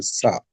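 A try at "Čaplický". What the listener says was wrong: Like a ch. I thought it was more of a ch. Because CZECH would be Czech for the Czech Republic. So there was a Chaplicky.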